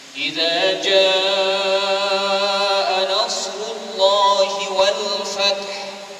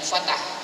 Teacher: kita jangan lupa dalam ayat yang pertama ini huruf ha ini jangan kita hilangkan terus jaa nasrullahi wal fath Fath bunyikan haya ya.